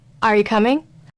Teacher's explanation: The voice rises on coming. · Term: rising intonation